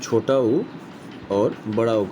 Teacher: ओष्ठ से हम छोटा ऊ और बड़ा ऊ का उच्चारण करते हैं